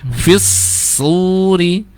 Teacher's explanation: tidak hanya fis-suri tapi fis-suri. S-nya ngalir dulu ya